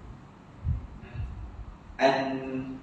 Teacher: Dan an memang ke belakang gigi atas sama macam huruf ta.